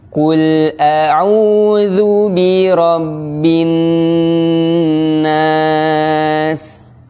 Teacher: Qaf tebal, lam tipis.